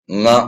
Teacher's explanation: ಅಥವಾ ಜೊತೆಗೆ ಅಥವಾ ಸಹಾಯದಿಂದ ಎದರ ಸಹಾಯದಿಂದ ಮೂಗಿನ ಸಹಾಯದಿಂದ ಉಚ್ಚರಿಸತಕಂತ ಮೂಗಿನ ಸಾರಿ ಮೂಗಿನ ಸಹಾಯದಿಂದ ಉಚ್ಚರಿಸತಕಂತ ಅಕ್ಷರಗಳಿಗೆ ನಾವು ಏನಂತ ಕರೀತೀವಿ ಅನುನಾಸಿಕ ಅಂತ ಕರೀತೀವಿ